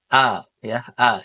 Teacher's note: Jadi, ketika kita nyebutkan huruf hamzah a ya, A itu enggak boleh ada nafas yang mengalir. Ee ee enggak boleh ada nafas yang mengalir, tapi dia harus tegas suaranya. A a karena dia sifatnya jahr dan juga syiddah, Teman-teman.